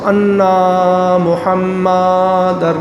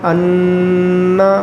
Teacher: انا پہ آواز کو ناک میں روک کے لمبا کرنا ہے، ناک میں، منہ کو نہیں کھولنا